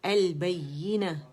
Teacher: ال جو ہے لام قمری ہے، اس لام کا اظہار ہو رہا ہے